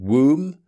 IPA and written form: wuːm (womb)